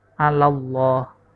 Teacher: lafaz Allah yang sebelumnya ada huruf berharakat fathah maka dibaca tebal · lafaz Allah yang sebelumnya ada huruf berharkat fathah, maka dibaca tebal, alallah. Yang terakhir al-mutawakkilin, al-mutawakkilin, ini disebut mad arid lisukun karena ada mad tabi'i, lina, mutawakkilina, lina, itu mad tabi'i, diikuti dengan huruf hidup, lalu dibaca dalam keadaan wakaf. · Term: lam tafkhim